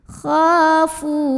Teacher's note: Fu mad tabi'i karena ada waw sukun yang didahului baris dhammah. Cara membacanya dipanjangkan fa-nya 2 harokat saja. · Dhi'afan kha mad tabi'i karena ada alif yang didahului baris fathah. Cara bacanya dipanjangkan kha-nya 2 harokat saja. Khafu. Fu mad tabi'i karena ada waw sukun yang didahului baris dhammah.